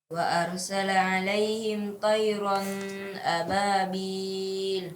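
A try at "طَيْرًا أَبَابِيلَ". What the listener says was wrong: Ya, tayran ya tidak usah ditahan karena di sini ada izhar halqi, maka tidak usah ditahan. Tayran tayran ababil. Tayran ababil.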